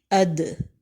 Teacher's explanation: حمزہ زبر دال ساکن، اد۔ زبان کی نوک اوپر کے 2 دانتوں کی جڑ سے لگ رہی ہے۔ دار حروف قلقلہ میں سے بھی ہے، یعنی جب دال پر ساکن آئے تو مخرج کے 2 حصے ملا کر چھوڑ دینے ہیں۔